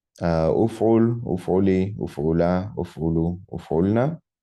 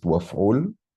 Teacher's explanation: this u prefix or e in the other vowel classes is elided whenever this word is not phrase initial, so, or utterance initial.